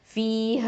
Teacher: ஃப கெஸ்ரா யா சுகூன், ஃபீ 2 ஹரக்கத்தை நீட்டணும், யாவுல் மத்து, ஹ ஃபதா அலிஃப் மத்து, ஹ 2 ஹரக்கத்து, ஃபீஹ.